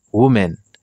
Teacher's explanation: li accentué sur premier syllabe